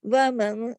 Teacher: وَمَن، ادھر تھوڑا اخفا، اخفا حقیقی اس کو کہتے ہیں. اور یہاں پہ چھوٹا سا غنہ ہوتا ہے ایک، مطلب غنہ آواز کو تھوڑی دیر ناک میں چھپاتے ہیں